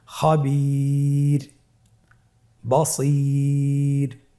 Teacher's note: ওয়াকফের কারণে রটাকে সাকিন দেওয়া হয়েছে এবং তার পূর্বে ইয়া সাকিন রয়েছে, তাহলে সর্ব অবস্থায় আমরা রকে পাতলা করে পড়ব।